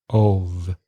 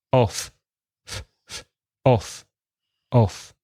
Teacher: Now, if there are two Fs, off, it's just air passing your teeth, passing your lips. So there's no vibration in the throat. Listen, off, off, off.